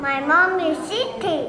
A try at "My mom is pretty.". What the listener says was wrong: No, not city. Look at me. Pretty.